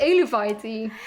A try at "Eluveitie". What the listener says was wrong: you don't pronounce the U there. This is tricky, but